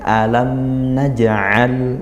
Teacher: Maka disempurnakan sifat-sifat aslinya mim, yaitu tawassut, dari segi suara dia mengalir sedang ya, tidak sampai dihentak, tidak sampai dengung, karena tidak hukumnya tidak gunnah ya, seperti itu, tidak ada gunnah, bukan idgham, bukan ikhfa-nya mim. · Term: izhar